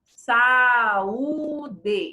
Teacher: Então, o A e o U são ditas com muita clareza. São vogais que se separam. O Sa fica numa, o U fica no outro e o D fica no outro.